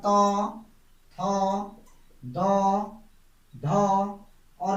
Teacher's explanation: देखिए तो वर्ग का उच्चारण दंत होता है, दंत, यानी कि तो वर्ग को बोलने में हमारी जीभ दांतों पे लगती है।